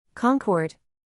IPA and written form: ˈkɑːŋkɔːrd (concord)